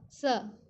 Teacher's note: जीवा के साथ दांत का स्पर्श होता है जीवा हमारे दांत को स्पर्श करता है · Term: दंत्य स